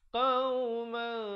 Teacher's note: Tapi bila datang kaf, disembunyikan bunyi tanwin atau nun matinya tu, nun tanwin itu disembunyikan di belakang kaf dengan kadar 2 harakat. Tapi tak sampai kaf lagi, kita bawa makhrajnya itu, kita bawa hampir-hampir ke situ. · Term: ikhfa